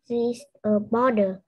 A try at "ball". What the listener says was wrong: A ball. Không phải border mà ball.